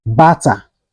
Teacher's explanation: the T sounds like D but in natural sense it is not D